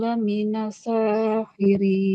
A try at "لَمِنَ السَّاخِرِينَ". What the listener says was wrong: Tasdid. Sini tasdid. Laminas sa.